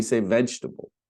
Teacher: We just go from the G to the T. We skip over the E.